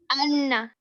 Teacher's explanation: نون شدہ کی آواز کو ہم ناک میں لے کے جائیں گے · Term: غنہ